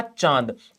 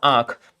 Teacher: चांद बिंदी हो, ये मुंह और नाक दोनों से बोला जाता है। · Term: अनुनासिक